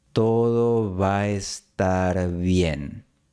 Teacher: las dos A se fusionan en una y pueden formar diptongo con la E